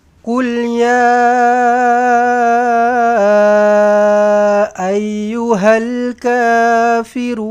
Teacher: Run mad arid lukun eh. Run mad arid lukun. Dua atau empat atau enam harakat. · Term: mad arid lisukun